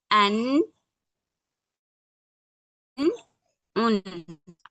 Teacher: हमारी जुबान का किनारा ऊपर दांतों के मसूड़े से लगे। तब हमारा नून अदा होता है। · ठीक, नून का मखरज हमारा कहाँ से अदा होता है, जब हमारी जुबान का किनारा और ऊपर के दरमियानी दांतों के मसूड़े कहाँ लगे? जब हमारी जुबान का किनारा ऊपर दरमियानी दांतों के मसूड़े से लगे तब हमारा नून अदा होता है।